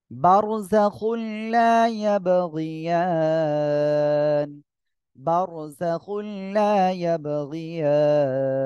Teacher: মোটা হবে তারপরে খুল এখানে গুন্না বাদে মিলিয়ে পড়বেন লা ইয়াবগিয়ান লা এক আলিফ টান ইয়াব কলকলা হবে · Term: র মোটা হবে